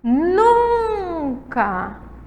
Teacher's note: Nunca. A sílaba tônica é o num.